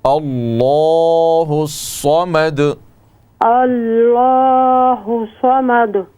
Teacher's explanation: لفظ اللہ کے لام کو موٹا کرنے کا طریقہ یہ ہے کہ آپ زبان کو تالو کی طرف اٹھائیں